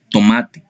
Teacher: La letra T representa un fonema oclusivo dental sordo